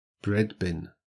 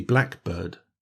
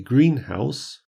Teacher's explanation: are usually pronounced with the stress on the first syllable